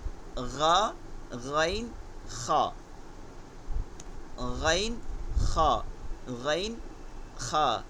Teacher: তো এই উচ্চারণটাও প্রতিবেশী কি তালু এই তালুটার একটু প্রয়োজন হয় যখন বের হয় তখন একটু তালু হয়ে বের হয় এর জন্য এটা নরম হয়ে যায়